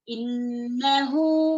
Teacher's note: نون میں کیا ہے شدہ ہے اچھے سے غنہ کریں گے